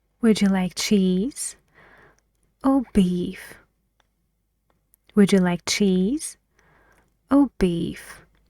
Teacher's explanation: cheese your voice goes higher and on beef it goes lower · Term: intonation